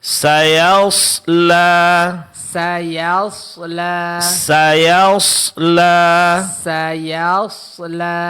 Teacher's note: yang ditebalkan adalah huruf shad. Sementara huruf ya sebelumnya itu di tipiskan. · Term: huruf tebal